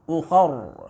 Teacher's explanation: ra-nya tabkhim, ra-nya dengan tebal.